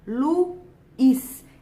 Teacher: é uma palavra que tem a última sílaba tônica, é uma palavra oxítona. Oxítonas são acentuadas se terminarem por A e O seguidas ou não de S, em ou ens, o que não é o caso de Luiz.